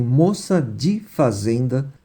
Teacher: considerando-se tanto o fonema i como a redução de e para i